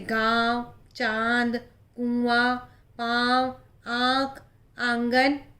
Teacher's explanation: बोलते समय जो आवाज़ है वो मुंह और नाक दोनों से निकलती है, इसीलिए अनुनासिक कहा जाता है।